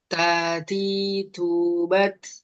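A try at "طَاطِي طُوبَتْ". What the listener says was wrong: Oke, ketika dhammah agak dikurangin hamesnya.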